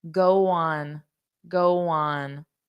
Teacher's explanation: Did you notice there was a little bit of a W? Because my mouth position for on, for the vowel would be like this.